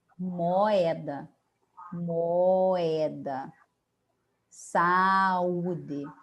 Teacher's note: nos iatos cada vogal mantém a sua individualidade fonética ou seja cada vogal tem o seu próprio som